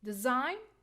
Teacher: the first syllable is weak because of the short e sound so we'll put the stress on the second syllable